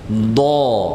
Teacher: Dod itu makhrajnya di pinggir lidah menyentuh gigi geraham kita